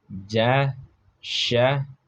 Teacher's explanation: tengah lidah dengan tengah langit-langit. Hurufnya ada ja, sya. · Dan yang ketiga ada wasat al-lisan ma'al wasat al-hanak al-a'la, yaitunya tengah lidah dengan tengah langit-langit